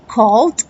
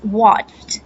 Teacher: try saying the words hold and you can feel the vibration while if you say the word watched you will not feel the vibration here in your neck